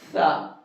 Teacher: زبان کی نوک ثنایا اولیاء کے کنارے سے ٹچ کریں گے